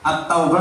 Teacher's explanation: Alif Lam Syamsiah alnya tidak jelas